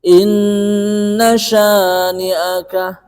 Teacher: Inna itu merupakan gunnah yang tasdid ya, yang asli. Jadi ini dipanjangkan, beda dengan idgham bi gunnah. Kalau idgham bi gunnah itu lebih pendek daripada gunnah yang asli.